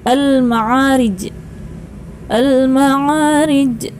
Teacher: termasuk qolqolah kubro harus di pantulkan